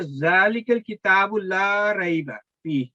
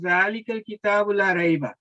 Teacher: کی آیت شروع میں ہے کہ ذالک الکتاب لا ریب فیہ, لا فتح کے ساتھ اور الف مدہ کے ساتھ 2 سیکنڈ تک آپ نے 2 حرکات کے مطابق آپ نے اس کو پڑھنا ہے